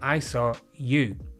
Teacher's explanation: This time the emphasis is on you, not another person.